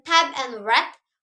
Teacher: Oral passage is blocked by pressing the tongue tip against the alveolar ridge.